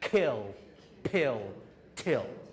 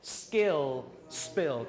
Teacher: there's only one situation in English where we have the unaspirated and unvoiced and that's when it follows an s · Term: unaspirated unvoiced